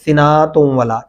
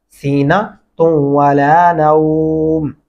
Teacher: یہ نون لمبا نہیں ہوتا, اس کے اوپر زبر ہے